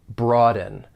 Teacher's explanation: there are two syllables. The stress is on that first syllable. Broaden. Now, one thing I want you to be aware of is that you may hear people pronounce this with a glottle stop.